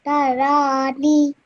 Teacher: So over here, the ra has a vertical fatha on top of it. So make sure you stretch this ra out for 2 seconds